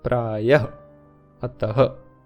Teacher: स्वर के ठीक बाद ह जैसा होता है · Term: विसर्ग की ध्वनि